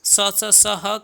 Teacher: ठीक है, अगर बात करें केवल संघर्षी व्यंजन क्या है, तो जो संघर्षी व्यंजन होते हैं वह तीनों स होते हैं। ठीक है, तीनों स और ह, इसे संघर्षी कहा जाता है और उष्म भी कहा जाता है।